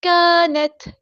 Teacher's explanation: تا ساکن کی آواز میں ہمز کے ساتھ شو ہوگی